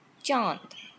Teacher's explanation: Ch, affricate, voiceless, not aspirated.